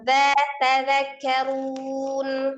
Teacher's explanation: Dza ujung lidah ada di ujung gigi seri bagian atas. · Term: zal